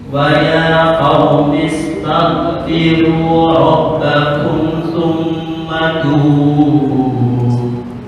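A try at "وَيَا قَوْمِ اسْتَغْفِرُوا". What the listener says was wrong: Ada pantulan kol-kolah dikit nih. Waya, ya. Tahu kan itu sifatnya adalah ada lawannya hamas jahar. Kan hamas itu mahmusuhu fahathahu syakhsun sakat. Gin enggak masuk. Kan gin sifatnya adalah jahar, bukan hamas. Ada getaran, hanya suara yang keluar, nafasnya enggak.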